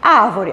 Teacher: então a posição da sílaba tônica da palavra árvore é a antepenúltima